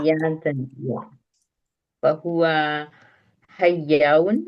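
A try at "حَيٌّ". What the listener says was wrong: Hayyun. Okay, no alif. It's not. usually hayyun, right?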